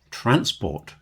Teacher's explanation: if I change the emphasis transport and put the stress on the first syllable, I can make a noun